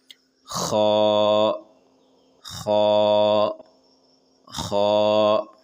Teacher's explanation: سمجھنے کے لیے آسانی کے لیے دیے ہوا ہے یہاں پہ، کف کے دوران یعنی کہ کھانسی کے دوران جیسی آواز نکلتے ہوئے منہ سے گندگی باہر نکالتے ہیں، بالکل ویسا ہی آواز خا کی ہوتی ہے · یہ بھی حروف حلقی ہے، شروع حلق سے ادا ہوتے ہیں